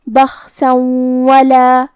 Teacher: یخافو، کلمت بخسن کے آخری میں سین پہ تنوین زبر ہے، پھر حرف الواو ہے کلمت ولا، واو حروف الادغام بغنہ میں سے ہے تو ہم یہ حکم کو غنہ اور تشدید کے ساتھ ادا کریں گے